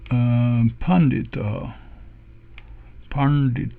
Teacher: we should have retroflex n and d there